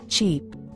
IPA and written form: ʧip (Cheap)